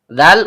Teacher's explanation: ujung lidah bertemu dengan ujung gigi seri atas. Karena zalnya berharakat kasrah diikuti ya sukun yang keluar dari tengah lidah naik memantul ke langit-langit, maka terjadi hukum bacaan mad thabi'i.